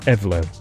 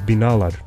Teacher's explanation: Turkish builds words by tacking on endings. But the vowels in those endings harmonize with the last vowel in the root word that they attach to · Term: vowel harmony